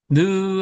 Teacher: 그러기 때문에 그 하면 이 소리가 나오다가 꺾어지기 때문에 그 자가 되어지는 거고요. 느 하면 이제 혀가 이 웃이빨을 살짝 대면서 요 끄트머리가 약간 올라가고 편편해지는 모습이에요. 그래가지고 느가 되고 이빨은 이에 두 개의 이빨 모양을 그대로 온떠서 세워놓은 거고요.